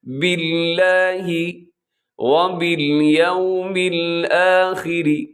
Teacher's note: وبالیوم میں کیا کرنا ہے آپ نے کہ ہونٹوں کو گول کرنا ہے، یو نہیں کر دینا بلکہ یوم الآخری، را باریک ہے، آخری میں را باریک ہے۔